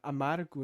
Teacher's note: esse R é mais curtinho mas é que é só um tapinha da língua ali na parte da frontal dos dentes